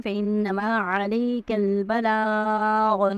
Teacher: عَلَيْكَ جو عین ہے وہ حلق سے ادا ہوگا، کاف باریک پڑ جائے گا